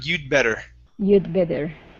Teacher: we don't want to finish off that d okay it moves right into the b sound